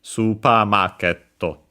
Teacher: even when combined, it has the accent on the market. So yeah, on the ma.